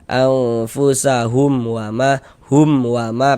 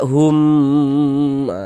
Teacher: karena dia idhar dibaca jelas, tidak berdengung, baca pendek saja. Anfusahum wa ma, hum wa ma, pendek gitu. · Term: idhar syafawi